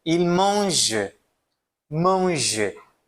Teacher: Eu não pronuncio o ENT, certo? Não pronuncio.